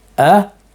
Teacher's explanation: Notice how the lips stay out after the pronunciation of the hamza. A'udhu. The lips do not return.